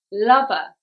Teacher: it's on the first syllable, lover, because it is a 2-syllable noun and generally the stress goes on the first syllable in 2-syllable nouns.